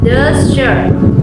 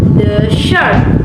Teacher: in the word desert or noun meaning a dry region, the first syllable is stressed, desert. In the word desert or verb meaning to abandon, the stress shifts to the second syllable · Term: word stress